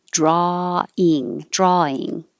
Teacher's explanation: don't say the W, just drawing